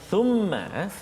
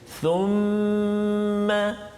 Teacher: Thumma wajib al-gunnah, kena dengung kat situ dua harakat, tak boleh cepat ataupun tak boleh laju bacaan kita.